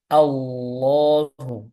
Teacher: punggung lidahnya ini dinaikkan ke atas dengan ujung lidah tetap menempel pada gusi atas depan Allahu seperti itu jangan dengan memonyongkan bibir Allahu ini salah bisa